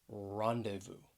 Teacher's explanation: it has three syllables the stress is on that first syllable